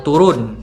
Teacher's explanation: Nah, vokal U yang pertama ini dia berada di bagian bagian posisi mengarah ke bawah lidahnya ee sedikit ke bawah ee tinggi sedikit bawah dan dia ber ee berada di belakang. Nah, untuk posisi pengucapan vokalnya itu hampir mendekati semi tertutup